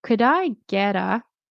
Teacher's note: We don't pronounce the L.